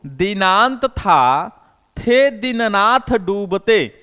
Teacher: यहां किससे आ रहे हैं, ये दंत से आ रहे हैं, यानी इसका उच्चारण क्या है, दंत वर्ण है, ये दंत वर्ण से आ रहे हैं, दंत से आ रहे हैं, जीभ दांत से सट जा रही है